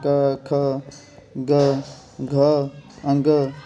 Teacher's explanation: जैसे क हो गया, जिनकी आवाज़ गले से निकलती है वो सारे कंठ्य में